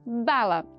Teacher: Outro tipo de oclusiva bilabial também, porém agora vozeada, ou seja, tem som de voz, que é a letra B. Eu tenho o fechamento, tenho a oclusão, tenho o contato dos dois lábios, superior e inferior, mas eu já tenho som no início da produção dessa consoante.